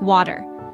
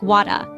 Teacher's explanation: In American English, the R at the end is pronounced, making it sound like water.